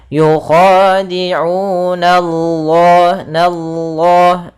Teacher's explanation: na tipis, baru Allah yang tebal, nallah. Kemudian pada lafal Allah ada mad tabi'i juga, yaitu panjangnya 2 harakat pada lafal Allah-nya.